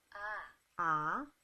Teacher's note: it seems like we go from an open jaw ah all the way to closed